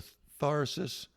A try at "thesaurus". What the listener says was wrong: No. You left a syllable out, but that's okay. It was close.